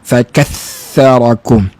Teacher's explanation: Bagi contoh, makhraj dah betul dah, tapi boleh jadi silap kerana dia tekan kuat. Bila dia tekan kuat, dia paksa keluarkan suara huruf tha itu dah jadi macam sin juga. Dia ada desaran.